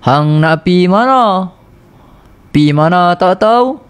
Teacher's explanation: Belah-belah utara dia cakap tinggi. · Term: intonasi orang utara